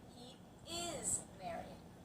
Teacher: the second time he is married you're bringing out the word is